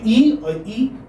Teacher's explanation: not rounded and they are not rounded you call them unbounded so this is centralized front unrounded vowel between between C between closed and half closed so this is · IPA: /ɪ/